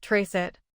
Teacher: When you say trace it fast, it sounds like trace it. The T links to the I.